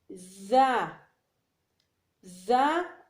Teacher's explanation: زا زا اور سین، ان دونوں کو زبان کی نوک اور اوپر نیچے کے دانت جب آپس میں ملے تو ادا ہوتا ہے